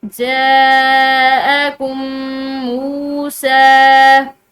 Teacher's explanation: واو ساکن ہے میم کے بعد اور سین کے اوپر کھڑی زبر ہے، تو اس کو کھینچ کر دونوں کو ایک الف کی مقدار لمبا کر کے پڑھیں گے